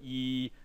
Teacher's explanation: this corresponds to your tongue being kind of high and in the front and if you kind of just turned your vocal cords on you would go e and in synthesis it sounds like this